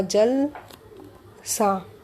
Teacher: शब्दों के उच्चारण के समय जो रिक्त स्थान आया उसके कारण अर्थ का परिवर्तन हो गया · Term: संहिता या संगम